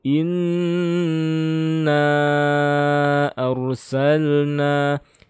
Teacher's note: nun yang bertasydid ini gunnah, baik itu gunnah atau dengung, seluruhnya sekitar 3 harokatnya